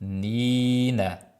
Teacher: ikkita nni orasida og'izdan chiqadi, burundan chiqmasin havo